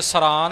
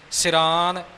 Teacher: ਸ ਦੀ ਸਿਹਾਰੀ ਦਾ ਪੂਰਨ ਉਚਾਰਨ ਹੋਵੇ ਜੀ